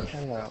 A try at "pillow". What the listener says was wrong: So not hello, but pillow.